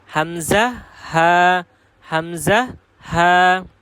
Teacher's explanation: হামজাহ এবং হা এ দুইটা হরফ উচ্চারণ হবে হলকের শুরু থেকে